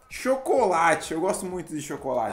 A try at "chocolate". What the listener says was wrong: E não é chocolate. Duas sílabas só. Chocolate.